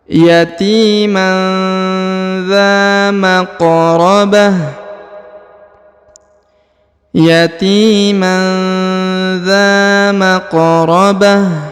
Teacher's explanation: Kemudian harokat ta, harokat ini berubah menjadi sukun ya. Ta-nya berubah menjadi sukun karena berada di ujung ayat atau di ujung bacaan.